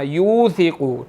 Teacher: واو مدہ ہے، ہم نے یہاں پر اس کو 1 سیکنڈ کھینچ کر پڑھنا ہے